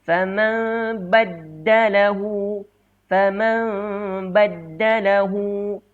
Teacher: kita renggangkan sedikit bibir kita berserta dengung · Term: iqlab